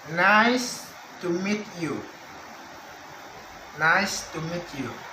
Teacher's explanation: starts from flat level at 2 then moves to high level 3 by placing the primary stress on certain word in a sentence and finally falls at the end of the sentence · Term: falling intonation